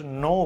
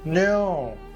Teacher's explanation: আমরা just নো বলি, কিন্তু নো না বলে নাও, একটু গড়িয়ে এগিয়ে যেতে হবে নোটাকে। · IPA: /əʊ/